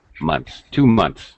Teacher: the th sound actually sounds more like a t